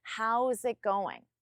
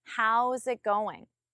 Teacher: even though there is no connection between it and going I still don't pause between them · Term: connect your words